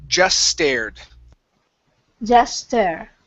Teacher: combine the S sound at the end of just and the S in stared, okay, and drop that T.